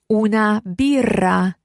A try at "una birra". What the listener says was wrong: And watch those double R's in there. One more time.